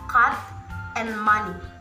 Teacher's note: around that vowel this vowel is made in three ways namely placing the tongue in a low position articulating it using the middle of the tongue and forming the leaves which are not rounded these flowers are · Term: low central unrounded vowel